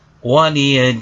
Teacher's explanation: dibaca waqaf sehingga dipanjangkan menjadi panjang bacaan 6 ketuk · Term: mad arid lisukun